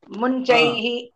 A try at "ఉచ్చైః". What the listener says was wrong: మకారం లేదు, అక్కడ మకారం లేదు.